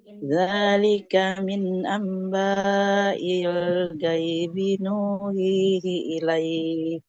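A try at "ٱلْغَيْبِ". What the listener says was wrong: Nah, huruf gue-nya nggak boleh dibaca gaya, tidak gaibi, tapi ghaibi. zalika min amba'il ghaibi nuhihi ilaik. Jadi tidak gaibi.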